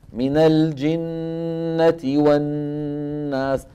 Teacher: الغنة الممطوطة في الميم والنون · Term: إطالة الغنن